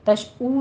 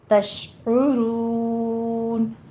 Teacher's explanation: وَلَكِن لَا تَشْعُرُونَ، کلا میں ادغام بلا غنہ کر دیں گے اور آگے لام الف لا الف مدہ ادا کریں گے اور تش، یہ شین کے اوپر تفشی کریں گے، عین کے اوپر ہونٹوں کو گول کیجئے، ضمہ ہے اور عین کی آواز وسط حلق سے نکلے گی